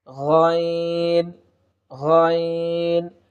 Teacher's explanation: হলকের শেষ ভাগ হইতে যে হরফটি উচ্চারিত হয় সেটি হচ্ছে গইন